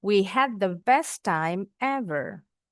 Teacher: Best time agak ditekan sedikit.